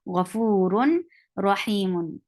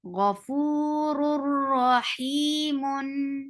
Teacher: But as we are not keeping the sound in our nose and we are not going towards the makhraj of noon, but we are merging one sound into another without gunnah. So the noon is being merged into ra without gunnah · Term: idgham without ghunnah